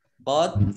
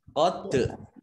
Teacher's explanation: dal sukun, bacaan kolkolah dibaca memantul. Qad. Kalau ada bacaan yang kolkolah itu memantulnya kelihatan ya.